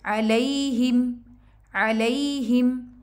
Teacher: अलई यहाँ पे मद्दे लीन बन रही है और ही पढ़ेंगे, इसको हे नहीं पढ़ेंगे, अलैहिम नहीं पढ़ना, हे नहीं है, ये ही है।